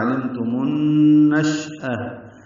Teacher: علمتم النشأہ، شین ساکن ہے، اس پہ حمزہ تفشی ہے، حمزہ اقصی حلق سے ادا کریں گے بالجہر